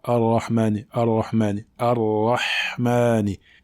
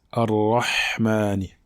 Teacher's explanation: Il faut bien la prononcer en laissant l'air passer, car le Ha est une lettre dans laquelle l'air passe.